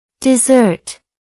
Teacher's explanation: That's 2 syllables. The stress falls on the second syllable.